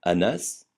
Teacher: Le N se prononce ne comme dans canari, jamais nasalisé comme dans éléphant.